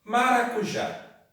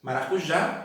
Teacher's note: Eu percebo pela tonicidade que o já é a sílaba mais forte. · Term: sílaba tônica